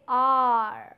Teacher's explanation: your tongue comes in front and then it rolls as a result you produce sound R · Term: retroflex